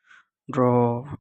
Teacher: তারণজাত ধ্বনি মানে এই ধ্বনি উচ্চারণে জিহ্বা তাড়িত বা কাঁপবে